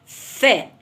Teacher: شفهي سني الأسنان في ظهر الشفة السفلية بطلع صوت الفاء